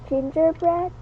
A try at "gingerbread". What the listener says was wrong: Very good. It's like bread. It has a short E sound.